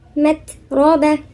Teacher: التاء من حروف الهمس إذا كانت ساكنة، اللي هي جريان نفس